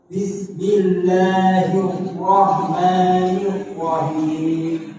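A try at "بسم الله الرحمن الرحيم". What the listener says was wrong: Nah, aku diganti him. Itu pakai ha atau ha? Ha. Baik, enggak boleh him. Tapi hi.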